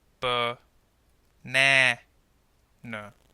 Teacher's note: the middle vowel sounds longer and clearer. This is called the stressed sound.